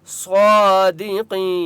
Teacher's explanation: دی قی یا مدہ ہے، قاف کو ایک الف کی مقدار کھینچ کر پڑھیں گے۔ صاد اور قاف دونوں مستعلیہ میں سے ہیں اس لیے دونوں کو موٹا پڑھیں گے